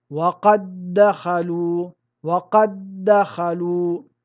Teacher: Ici, nous fusionnons le premier del dans le deuxième, de telle sorte que les 2 lettres ne deviennent qu'une seule et même lettre avec une shedda. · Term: al-idgham